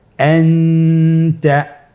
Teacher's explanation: নুন সাকিন অথবা তানবিনের পরে ইকফার 15টি হরফের যে কোনো একটি হরফ আসলে তাহলে নুন সাকিন তানবিনকে নাকের ভিতরে লুকিয়ে গুণনার সহিত পড়তে হবে · তাহলে এখানে আমাদেরকে নুন সাকিনকে লুকিয়ে গুণনা করে পড়তে হবে। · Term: ইখফা